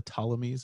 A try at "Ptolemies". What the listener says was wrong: don't pronounce the P, man. Silent P.